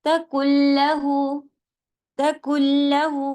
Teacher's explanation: لام پہ جائیں گے ڈائریکٹ بیچ کا نون پورے ہٹ جائے گا کیونکہ یہ ادغام کامل ہے